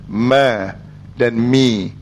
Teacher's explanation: Huruf mim ni dia bukan ada nafas, tapi dia ada gunnah.